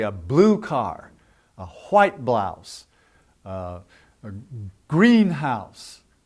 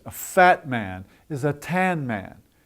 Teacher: we accent our descriptive adjectives and colors and things like that